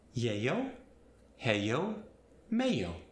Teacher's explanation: In Spanish, the double L sound gets the Y sound,